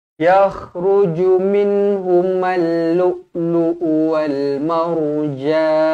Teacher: Ra dibaca tebal kerana sebelum dia berbaris atas.